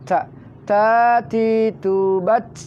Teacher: Itu ujung lidah dengan pangkal 2 buah gigi di atas. Ta. Nempel di ujung pangkal gigi.